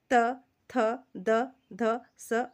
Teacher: जिन व्यंजनों का उच्चारण ऊपर के दांतों पर जीभ लगाने से होता है उसे दंतव्य व्यंजन कहते हैं